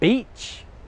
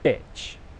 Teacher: one sound, E, is a long English vowel sound, and the sound I is a short English vowel sound